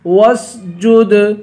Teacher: جیم کو دال سے ملا کر دال پہ قلقلہ کریں گے